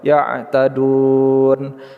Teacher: kita panjangkan 'du' terlebih dahulu, lalu kita buat 'nun' sukun di akhir , panjangkan 'du' sampai 6 harakat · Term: Mad arid lissukan